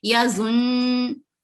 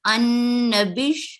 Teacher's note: تشدید کو ادا کرتے ہوئے وقف کریں گے